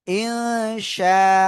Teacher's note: নুন সাকিনের পরে ইকফার অক্ষর শিন আসছে, নাকের ভিতরে নিয়ে গুন্না করবেন।